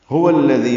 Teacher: هو الذی، واو کو الذی کے لام سے ملانا ہے، ہاں اقصی حلق سے ادا کرنا ہے، واو ہونٹوں کی نا تمام گلائی سے ادا کریں گے، لام باریک پڑھیں گے، دال نرمی سے ادا کریں گے، ذی یائے مدہ ہے، 2 حرکات لمبا کریں گے، بعث تھا نرمی سے ادا ہوگا، عین وسط حلق سے ادا ہوگا۔